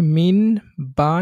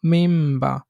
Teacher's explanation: অর্থাৎ এখানে আমি মিন বা না বলে মিম বা, এই নুনটা মিমে পরিবর্তিত হয়, এটাকে ইকলাব বলে